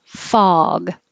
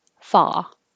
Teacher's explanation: This is ah, so the jaw is low and the lips are straight.